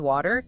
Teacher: in American English, very often, especially between vowels, that T becomes what linguists call a flap or a tap · Your tongue just quickly taps the roof of your mouth.